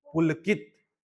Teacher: की में जोर दे रहे हैं